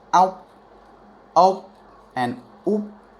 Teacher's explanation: It's a simultaneous pronunciation of the K sound with a P sound